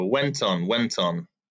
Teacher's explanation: journey i links together went on went on just sounds like one word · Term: sound linking